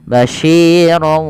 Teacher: Ronnya masuk ke waw sehingga suara nunnya diganti dengan huruf waw sehingga menjadi basyirau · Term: idgham bi gunnah